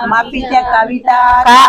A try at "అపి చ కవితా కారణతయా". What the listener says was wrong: అక్కడ ఆపినప్పుడు అపిచ అనే చదవాలి, కలిపి అయితే మపిచ అని చదవాలి.